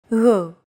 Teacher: loosely held G, almost as if you're gargling, but don't make it sound too throaty.